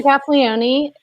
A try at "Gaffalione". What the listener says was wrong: Drop the E. Just Gaffalione.